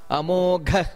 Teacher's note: ಆಮೇಲೆ ಅಮೋಘ ಮಹಾಪ್ರಾಣ ಇದೆ